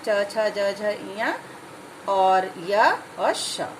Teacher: जब हम ई बोलते हैं या च, छ बोलते हैं तो हमारी जीभ तालु को टच करती है, छूती है। तो तालु को छूते हुए जीभ जिन वर्णों का उच्चारण करती है वो तालु के अंतर्गत आते हैं।